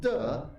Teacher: no air comes out because it's voiced